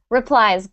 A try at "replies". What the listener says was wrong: Good R sounds. Excellent.